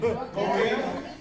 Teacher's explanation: when you say boker, you put the accent on the first syllable